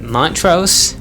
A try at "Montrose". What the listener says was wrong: Montrose. You actually pronounce the T. Montrose.